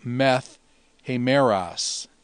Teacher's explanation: The alpha on meta dropped, and because of the rough breathing, the tau becomes a theta